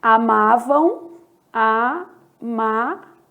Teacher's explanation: No final, a gente tem um ditongo fonético.